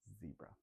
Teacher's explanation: For the Z sound, teeth closed, tongue, roof of the mouth, and blow air out. So our the air is coming out actually underneath your tongue, and it's kind of vibrating a little bit.